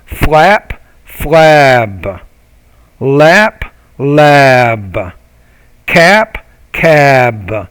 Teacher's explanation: Notice the difference in the length of the vowel.